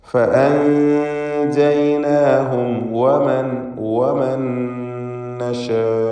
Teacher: സാക്കിനത്തായ നൂനും ശേഷം ഹറക്കത്തുള്ള നൂൻ രണ്ടും ചേർത്ത് ഉച്ചരിക്കുക. സാക്കിനത്തായ നൂനിനെ ഇദ്ഗാം ബിഗുന്ന കാമിൽ നൽകി നൂനിലേക്ക് ശേഷമുള്ള നൂനിലേക്ക് പൂർണ്ണമായും ലയിപ്പിച്ച് ശബ്ദുള്ള നൂനിനെ മാത്രം ഉച്ചരിക്കുക.